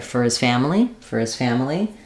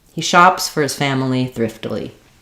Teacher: shops got a little bit more length and Clarity because it is the verb